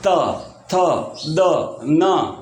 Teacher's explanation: जब हम बोलते हैं तो अपनी जीभ जो है वो दांतों को टच करती है। जैसे त, थ, द, न, है ना, ऐसे तो वो दंत्य हो गए।